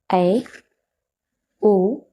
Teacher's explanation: मतलब विवृत्त स्वर में मुख की आकृति पूरी खुलती है, यानी मुंह पूरा खुलता है, और अर्ध विवृत्त स्वर में मुंह जो है वह विवृत्त स्वर की अपेक्षा कम खुलता है